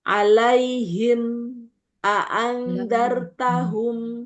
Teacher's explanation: Jadi, dia cuma mingkem hanya sekedar merapatkan kedua bibir sebentar.